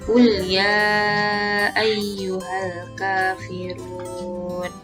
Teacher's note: Ya ayyuha, ya di sini dibaca panjang 5 harokat dan dinamakan mad jaiz munfasil.